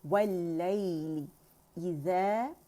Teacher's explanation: लाइली यहाँ यालीन बन रहा है, ली ज़ेर के साथ पढ़ेंगे, कसरा के साथ बारीक होगी। वल्लैली इज़ा, और ई की साउंड हमज़ा किया गया, अक़सुल हल्क से अदा होगा।